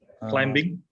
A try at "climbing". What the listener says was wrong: Ah, the common mistake, pronunciation mistake. Okay, so this is the way we actually say it in English. So the B is a silent one. You don't say climbing, but climbing.